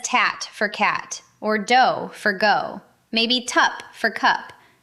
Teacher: The sounds that are supposed to come from the back of the mouth slide up to the front. So instead of K and G, you get T and D. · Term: fronting